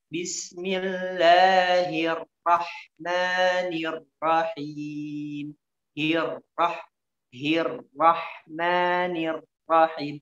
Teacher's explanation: Jadi ra-nya tata caranya digetarkan, ya, tapi tidak berlebihan, tidak besar ya getarannya, atau tidak jelas getaran.